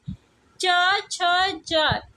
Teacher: च, छ, ज ये जो है तालव्य व्यंजन कहलाते हैं